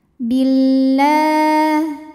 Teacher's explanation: lam yang menghadapi huruf Syamsiyah yaitu huruf lam maka cara bacanya alif lam dilewatin tidak kita baca ya jadi langsung masuk ke lam berikutnya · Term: Idgham Syamsi